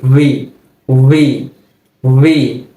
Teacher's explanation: ওই উপরের দাঁতটা নিচের ঠোঁটের পেটের সাথে একটু লেগে